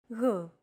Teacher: It's like a very soft, continuous, and loosely held G, almost as if you're gargling